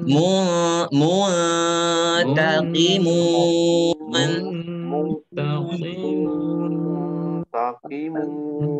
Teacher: Yang monyong hanya mim. Nun udah enggak monyong. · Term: Bibir monyong